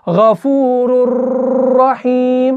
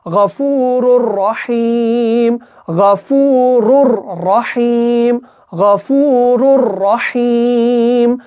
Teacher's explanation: را جو ہے یہ اٹک جائے گا، یعنی زبان ہماری اوپر والے تالوں کے ساتھ اٹک جائے گی